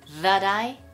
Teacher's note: that▁の▁T▁が▁I▁とくっついて